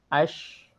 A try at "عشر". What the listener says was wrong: Nanti roh lebih tebal lagi,